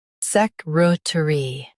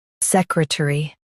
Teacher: US says ter, UK says t. Emphasize sec and r.